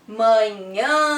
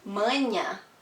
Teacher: Eles vão nasalizar a letra A. Eles vão dar um som nasal para a vogal A.